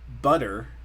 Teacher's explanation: with the tea though one we kind of hit the tongue you kind of slap the tongue against the roof of the mouth for butter